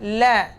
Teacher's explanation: hujung lidah bersentuhan dengan langit-langit atas, la, huruf lam.